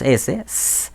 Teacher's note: vamos a ver que las cuerdas vocales no vibran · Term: sonido sordo